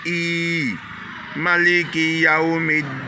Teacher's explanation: Les 2 voyelles I montrent ici qu'on doit tirer, c'est une longue voyelle. On doit dire I.